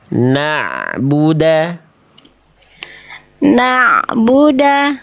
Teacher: Bunyi ainnya tak ada bunyi e di ujung pelafalan. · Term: ain sukun